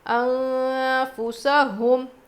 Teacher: نون ساکن کے بعد فا حروف اخفاء میں سے ہے تو کیا کر کے پڑھنا ہے ہم کو، یہاں پہ نون کی آواز کو ناک میں چھپا کر پڑھیں گے